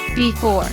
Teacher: Before two syllables, second syllable is stressed.